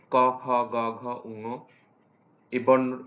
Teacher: এই বর্ণগুলো হচ্ছে কণ্ঠবর্ণ, অর্থাৎ মানুষের এই যে কণ্ঠে থেকে যে উৎপন্ন হয় পেছন দিক থেকে জিহ্বামূলীয় বা কণ্ঠধ্বনি, অর্থাৎ জিহ্বার পেছন দিক থেকে চাপ সৃষ্টি হয়ে এই বর্ণগুলো উৎপন্ন হয়।